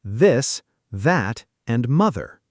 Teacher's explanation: Voiced means your vocal cords do vibrate. So, you feel a little buzz in your throat. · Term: voiced th